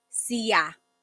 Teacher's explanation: There are some regions in the Philippines where sha is pronounced siya.